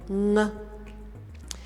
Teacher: And it comes from the combination of n, which is actually the middle sound, palatal sound, n, and then if after n comes k or g, we will actually produce this sound in the back of the throat, in the back of the mouth, like ng. Because it's hard to say nuk, nug. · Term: ng sound